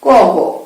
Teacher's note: যেমন এই অঘোষ ধ্বনিকে উচ্চারণের সময় তোমার স্বরতন্ত্র অনুরণিত হয় না, কিন্তু ঘোষ ধ্বনিগুলো উচ্চারণের সময় স্বরতন্ত্র অনুরণিত হয়। অল্প প্রাণ ধ্বনি উচ্চারণের সময় বাতাসের চাপ থাকে না, মুখে কোনো চাপ থাকবে না